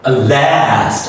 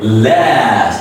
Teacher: the first L is a light L, and the next A is a stretched A, and it's a pure short letter A, and you say it last, okay?